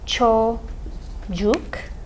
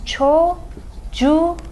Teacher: k became a yumuşak ğ because of the suffix that starts with a vowel